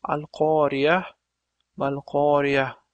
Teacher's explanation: Lekin biz hozir bu yerda vaqf qilganimiz uchun al-Qoriya mal-Qoriya deb h tovushi bilan tugatamiz.